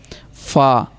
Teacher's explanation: اوپر کے دانتوں کے کنارے اور نچلے ہونٹ کے تر حصہ، یہ اوپر والے دانت اور نیچے کے ہونٹ کے تر حصہ، فا۔